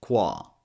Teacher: the second syllable is qua which is a k w and a big a sound